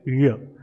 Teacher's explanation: और एक साउंड है जैसे य बोलते हैं तो हमारे पैलेट की तरफ, जो हार्ड पैलेट है उसकी तरफ क्या होता है, ये टंग जाती है, इसलिए इसे हम पैलेटल साउंड बोलते हैं।